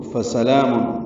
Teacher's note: سین سیٹی جیسی آواز سے، سفیر کی آواز سے ادا کریں گے جلدی، لام کو 2 حلقات لمبا کریں گے، میم کو لام سے ملانا ہے۔